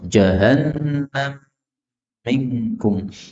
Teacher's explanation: mim ketemu min, boleh idgham